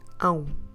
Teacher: Use your nose. It's a nasal diphthong.